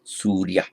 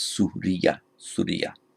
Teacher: The long U and then the consonant cluster, the R followed by the Y